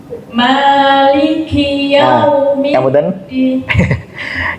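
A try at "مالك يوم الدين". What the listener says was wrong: Kasrahnya jangan sampai li. Nah, maliki. Jangan ki. Jadi kasrahnya berkurang. Ki.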